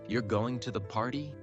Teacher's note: The voice rises at the end, signaling it's a question.